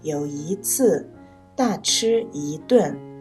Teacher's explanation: 因为次和顿都是四声，所以一读二声